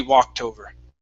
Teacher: you cannot stop between walk and tover. It has to be walked over.